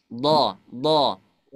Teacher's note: dia tidak tidak keluar tidak keluar nafas kalau huruf d ini dia tidak mengalir nafasnya D tidak ada nafas tapi suaranya yang mengalir